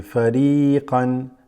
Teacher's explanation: the ya there extends the kasra just slightly